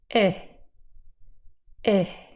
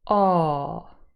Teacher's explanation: The lips are not as spread as an E, they're a little bit more neutral, but they're not rounded compared to aw. This again, clearly a rounded vowel sound.